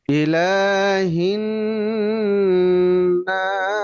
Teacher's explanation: লা খারা জবর আছে, এক আলিফ লম্বা হবে। এই যে নুনে তাসদীদ, এটা গুণা হবে।